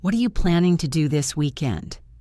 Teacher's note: I stressed planning and weekend.